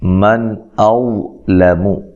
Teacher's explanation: نون ساکن کا اظہار ہے، غنہ نہیں کیا جائے گا اور حمزہ کو تحقیق سے پڑھنا ہے.